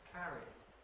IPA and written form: ˈkærid (carried)